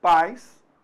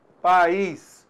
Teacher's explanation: E o I, semivogal, o som decresceu. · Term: semivogal I